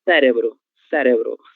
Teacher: Veja que ela tem como sílaba tônica a sílaba sé